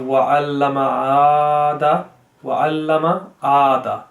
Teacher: You don't have to prolong the ma at all. Wa'allama is incorrect, because the alif actually has a standing fatha.